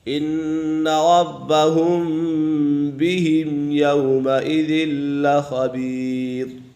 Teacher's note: یہاں پر میم ساکن کے بعد یا آ گئی ہے تو یہاں پر اظہار شفوی ہے کیونکہ میم ساکن کے بعد حرف با اور میم کے علاوہ کوئی بھی حرف آ جائے تو میم ساکن میں اظہار شفوی ہوگا یعنی غنہ نہیں کریں گے۔